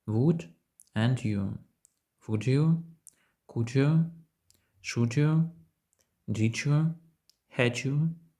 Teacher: буква D в кінці слова would може співвідноситися з U на початку слова U але коли ми робимо це виходить новий звук звук G